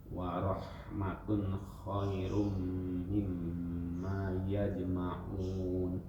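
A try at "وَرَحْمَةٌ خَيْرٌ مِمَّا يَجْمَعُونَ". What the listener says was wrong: Khairum enggak yajma'un aja. huruf ain aja yang dibiasakan enggak bocor.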